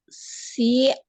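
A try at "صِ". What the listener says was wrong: Tebalkan lagi sli ya. Oh, permukaannya juga dinaikkan ya. Permukaan lidahnya juga naik. Jadi yang turun itu tengah lidah ya. Jadi tebal ya. Tebal sekali. Naikkan pangkal lidahnya sli. Pangkal lidah, permukaan lidah juga. Jadi naik semua ya.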